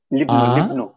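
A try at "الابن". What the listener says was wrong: আচ্ছা, কিন্তু এখানে যেহেতু এটা প্রথমে আছে ওয়াসলা, আমরা পড়বো ওয়াসলাটা। ওয়াসলা আ, তারপরে লয় রসে আলি, আলি, আলি, আলি।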